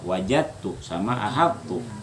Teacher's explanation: Dalnya di idgham atau di idgham itu dilebur, dimasukkan ke dalam tak, lalu hilangnya. Arti hilang apa kada lagi dibaca.